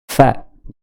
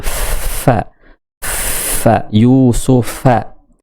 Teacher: Ini perut bibir, ya. Jadi bibir bawah bagian dalam ketemu dengan gigi ini. Gigi seri atas. Fa, keluar angin. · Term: huruf fa